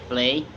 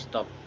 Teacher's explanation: And the explanation is p, voiceless bilabial plosive, produced by blocking airflow with the lips and releasing it without vibrating the vocal cords